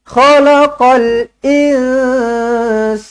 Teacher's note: Nun kosong bertemu dengan Sin ikhfa Hakiki dengungkan dua harakat